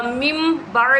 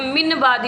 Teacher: यहाँ पे नून साकिन के बाद बा है और ये इक़लाब होगा यहाँ पर, क्योंकि अगर नून साकिन के बाद बा हर्फ आ जाए तो वहाँ पे इक़लाब होगा, यानी नून को मीम से बदल कर अदा करेंगे।